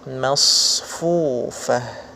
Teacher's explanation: Dan huruf shad selain dia memiliki sifat isti'la, huruf shad juga memiliki sifat rokhwah. Ya, rokhwah artinya ada suara yang mengalir ketika huruf shad ini dalam keadaan sukun